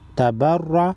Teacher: रा पर ज़बर है, रा को मोटा पढ़ेंगे, नून मुशद्दद पर गुन्ना करेंगे।